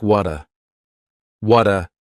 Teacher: No, that T at the end of the word what is going to change to a D sound. This is really typical of American English where a T that's surrounded by vowel sounds is going to change to a D. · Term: flapped T